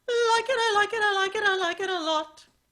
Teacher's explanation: it starts with an l which is forward in your mouth it has a k in the middle of it which is pronounced with the back your tongue